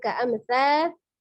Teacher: ada mim sukun bertemu dengan huruf tha. Hukumnya adalah izhar safawiyah, jadi dibacanya jelas, tidak terburu-buru